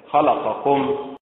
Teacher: وينطقها أهل الصعيد في مصر بالنبر على حركة اللام